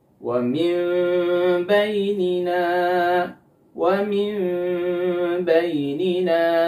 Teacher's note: Ada nun sukun ketemu dengan huruf ba, disebut dengan iqlab. Gunnahnya harus gunnah yang kamilah.